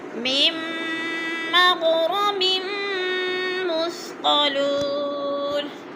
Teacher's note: ام تسألهم اجرا فهم من مغرم مثقلون، میم پہ ادغام ہو رہا ہے، میم کو میم کے ساتھ ملا کر مدغم کریں گے، درمیان والے نون کو نہیں پڑھا جائے گا اور رو پر پڑھا جائے گا۔